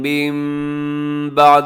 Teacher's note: یہاں من بعدی پہ اقلاب ہو رہا ہے غنّے کے ساتھ